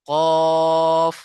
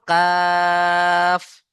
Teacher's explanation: কফ মুখ গোল হবে কাফে এসে মুখ গোল হবে না